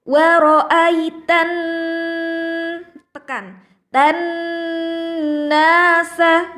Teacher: Nun tasydid cara membacanya adalah ditekan lama weroh Eighteen pekan dan nah sah Jadi tidak boleh waroh aid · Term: ghunnah